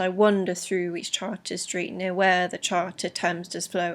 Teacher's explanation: we've got a fairly strong iambic rhythm all the way through, where the second syllable is stressed